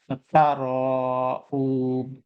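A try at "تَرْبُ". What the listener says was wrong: বায়ের কলকলাটা আরেকটু সুন্দর হবে, হ্যাঁ, তারউব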